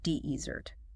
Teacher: The stress falls on the first syllable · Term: word stress